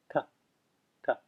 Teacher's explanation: That is your sure indication that you're looking at a retroflex or cerebral letter, and you need to curl the tip of your tongue back so that it touches the roof of your mouth. The reason it's called retroflex is because retro means back, and your tongue is curled back like this.